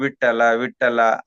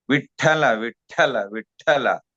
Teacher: ಇಲ್ಲಿ ಠ ಅಂತಕಂತದ್ದು ಮಹಾಪ್ರಾಣ ಆಗಬೇಕು ಮತ್ತೆ ಆ ಮಹಾಪ್ರಾಣದಲ್ಲಿ ಒತ್ತಕ್ಷರವು ಆಗಬೇಕು ಅಲ್ಪಪ್ರಾಣ ಆಗಬಾರದು